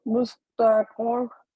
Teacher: جو آخر پر را ہے جو وقف ہو رہا ہے تو وہاں تشدید ہے، وہاں ڈبل سٹرس دیں گی